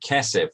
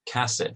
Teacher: they wouldn't make a distinction between Segol and Patach.